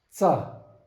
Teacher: Cha with little hissing sound and high pitched